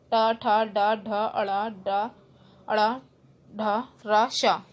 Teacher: मूर्धन्य मीन्स आपके मुख की छत से जो बोले जाते हैं कठोर तालु के अगले भाग से।